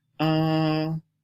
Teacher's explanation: This is the first tone. It is called high and level. And it is pronounced a.